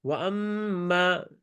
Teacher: میم لمبا کہ ہم نے کر دیا کیونکہ یہ غنہ میم شد ہے